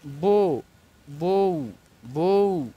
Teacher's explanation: ও ধ্বনিটাকে কিছুটা টেনে পড়া যায় কিন্তু উ ধ্বনিটা এর সাথে একত্রে উচ্চারিত হয়ে যায় এটা হচ্ছে পূর্ণ স্বরধ্বনি এবং উটা হচ্ছে অর্ধস্বরধ্বনি। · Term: দ্বিস্বরধ্বনি, দ্বি-স্বরধ্বনি